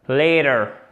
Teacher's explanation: Le T devient presque un D.